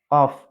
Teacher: untuk huruf qaf, tempatnya adalah lidah bagian belakang bertemu dengan langit-langit lunak. Langit-langit lunak itu mendekati ini, anak lidah yang ada di tenggorokan.